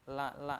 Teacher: lam adalah makhrajnya ujung lidah bertemu gusi atas ya, menempel di gusi atas, la gitu ya.